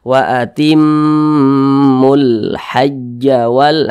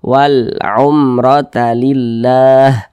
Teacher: lam qamariah itu biasa disebut juga dengan izhar qamariyah karena dia cara membaca huruf lamnya itu diizharkan Jadi huruf lamnya itu dibaca jelas